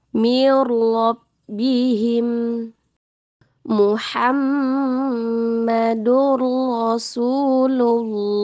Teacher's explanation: Nun sakin atau tanwin masuk ke huruf setelahnya jadi tidak dibaca dengan dengung dan tidak ditahan tidak sama dengan pengucapan idgham maal gunah atau bighunah nah huruf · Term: tanpa dengung